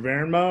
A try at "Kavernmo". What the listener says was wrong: You can say all the letters, it's Kavernmo.